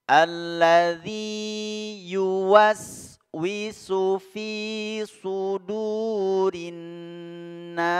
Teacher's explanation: Huruf zal, ingat, makhrajnya ada di ujung lidah yang bertemu dengan 2 ujung gigi seri atas. Ujung 2 gigi seri atas.